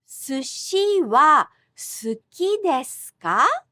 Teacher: Just a rising intonation and the sound ka at the end indicate that this sentence is a question